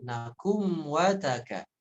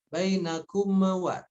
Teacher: Kemudian nakum di sana idhar syafawi, ya dibaca jelas mimnya tanpa memantul.